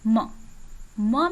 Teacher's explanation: लेकिन इसके साथ ही जब हम अगला बोलें प, फ, ब, भ, म में नासिका का भी प्रयोग हो रहा है और साथ ही ओष्ठ का भी प्रयोग हो रहा है